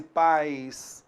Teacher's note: Esse I é vogal? Não é vogal. Olha só como o som decresce. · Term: semivogal I